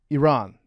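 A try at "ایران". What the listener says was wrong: You gotta roll your R. Iran.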